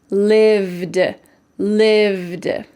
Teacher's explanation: It just has a final D sound. There isn't the vowel E. Listen carefully, lived, lived.